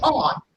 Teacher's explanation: But if you say on, the lip gets rounded up.